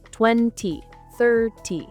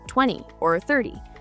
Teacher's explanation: In British English, you'll often hear the T in 20 and 30 pronounced very clearly, 20, 30. In American English, that T sound is often softened or even dropped, sounding more like 20 or 30.